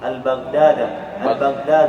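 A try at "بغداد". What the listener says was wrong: Baghdad, enggak usah pakai alif. Baghdad.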